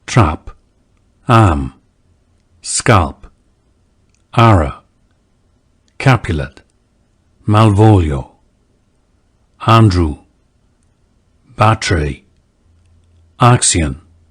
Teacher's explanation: the trap lexical set. A more open front vowel than today's a, similar to the a vowel in the dialects of northern England.